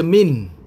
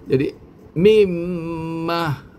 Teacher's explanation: maka hendaklah digabungkan bacaan nun atau tanwin ke dalam huruf mim maka suara Nun akan lenyap dan berubah menjadi suara Mim beserta dengung